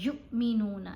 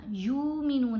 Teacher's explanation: یا کو حمزہ ساکن سے ملایا تو جھٹکا دے کر پڑھا